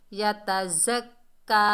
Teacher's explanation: زا جو ہے سیٹی والا اور سختی والا حرف ہے